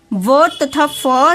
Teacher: व तथा फ दंत तथा ओष्ठ मीन्स दांत और होंठ के दोनों के साथ मिलकर होते हैं, तो ये दंतोष्ठ वर्ग में आते हैं।